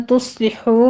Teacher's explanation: وَإِن تُصْلِحُوا میں نون ساکن کا اخفا کی صاد کو پر پڑھتے ہوئے حمز کے ساتھ سیٹی کی آواز کے ساتھ پڑھیں گے